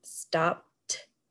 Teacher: if you say the word stopped, you say T instead of D. So that when you hear that T, that means we're doubling the consonant, stopped.